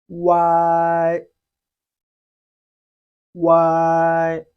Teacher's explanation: The oo sound must be read before the I sound follows immediately, very quickly.